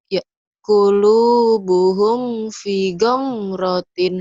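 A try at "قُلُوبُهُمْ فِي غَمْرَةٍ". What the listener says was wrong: Fi-nya panjang. Fi ghamratin. Qulubuhum fi ghamratin. Fi-nya panjang. Qulubuhum fi ghamratin.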